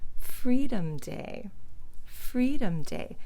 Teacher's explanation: you notice how low my voice is going at the end of that